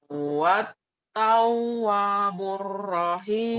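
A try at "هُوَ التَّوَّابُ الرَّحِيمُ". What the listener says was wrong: Kurang, wanya panjang. Huwat tawwa panjang atoh. Huwat tawwabur rahim.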